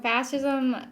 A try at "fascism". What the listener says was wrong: I think like S-H. Like fashion. Fashion, but fascism.